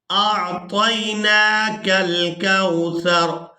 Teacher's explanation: را کو ساکن کر دیں گے وقف کی وجہ سے، سا را زبر سر، أعطيناك الكوثر۔